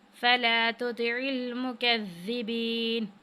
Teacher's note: ज़ाल को हमने नरमी के साथ अदा करना है और काफ को बारीक पढ़ना है